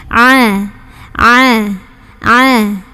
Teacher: suaranya diantara tertahan dan mengalir namanya sifat bainiyah atau tawasuth jadi mengalir tidak terlalu ditahan juga tidak terlalu suaranya tapi nggak · huruf Ain keluarnya dari tenggorokan paling tengah ya ah ah ah ketika sukun ini jangan mantul jangan ditahan